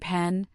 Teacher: its sound is the unvoiced bilabial plosive P. You create this sound by pressing your lips firmly together, building up air pressure in the oral cavity, and then releasing it in a quick, explosive puff of air.